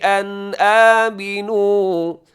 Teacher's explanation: ان آمنوا حمزہ ہے نون کے بعد تو یہاں بھی اظہار ہوگا، غنہ نہیں ہوگا